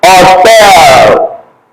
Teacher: if you're pronouncing it, the H disappears. The H disappears.